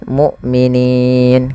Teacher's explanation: hamzahnya harus dibaca dengan syiddah dan jahar, tidak ada nafas dan tidak ada maksudnya tidak mengadirnya nafas, yaitu dan tidak dialirkan suaranya tapi tertahan.